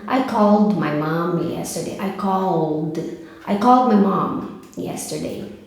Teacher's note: Call tem voz também. Então esse ED do call vai ficar som de D.